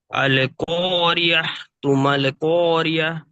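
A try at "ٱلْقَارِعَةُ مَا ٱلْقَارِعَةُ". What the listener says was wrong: যদি আপনি এখানে মানে না দাঁড়ান অর্থাৎ ধরে পড়েন, তাহলে কিন্তু আর হা উচ্চারণ করলে হবে না। মাঝখানে একটা ছেড়ে যাচ্ছে।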